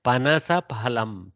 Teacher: Pha has Mahaprana, but Panasa has Alpaprana.